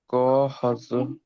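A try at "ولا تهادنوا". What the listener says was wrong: কফ নেই এখানটায়, তা তা তা, ত নয়, তা তা।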